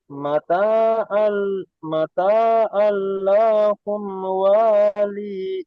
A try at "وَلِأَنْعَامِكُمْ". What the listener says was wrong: এখানে ওয়ালি ইন নয়, ওয়ালি আন আমিকুম।